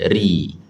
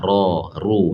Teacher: Bila baris atas ra, ru, yang tu tebal, kena lengkungkan. Tapi bila baris bawah tak perlu dilengkungkan, nipiskan saja, ri.